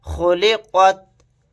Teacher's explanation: خوا کو یہاں پر موٹا پڑھیں گے, قاف کو بھی موٹا پڑھیں گے